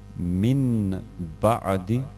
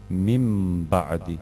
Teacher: Pa ćemo ovdje umjesto min ba'di čitati kao da je napisano ovdje mim ba'di. Dakle, harf nun sa sukunom se gubi i pretvara u harf m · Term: uklapanja u slovo M